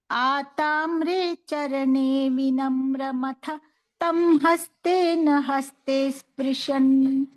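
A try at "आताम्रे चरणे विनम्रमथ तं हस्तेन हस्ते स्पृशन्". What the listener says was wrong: అథ తర్వాత కొంచెం గ్యాప్ ఇచ్చి తమ్ చెప్తున్నారు కదా, ఇప్పుడు ఈసారి ఆతామ్రే చరణే వినమ్రమథ తం హస్తేన హస్తే స్పృశన్ అలా చెప్పండి.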